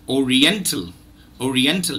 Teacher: the last syllable is not tell but till till the schwa comes there the schwa comes there okay Oriental